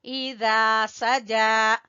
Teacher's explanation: زال کو کھینچیں گے الف مدہ کی وجہ سے، جیم کو کھینچیں گے کھڑی زبر کی وجہ سے۔